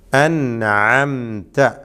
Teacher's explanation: ഇവിടെ നൂന് ലിസാനിയ അക്ഷരമാണ്, നാവിൽ നിന്നും ഉച്ചരിക്കുന്ന ഹർഫാണ്. ഐന് ഹൽക്കിയായ അക്ഷരമാണ്. ഹൽക്കിൻ്റെ മധ്യത്തിൽ നിന്നാണ് ഐന് വരുന്നത്, തൊണ്ടയുടെ മധ്യം.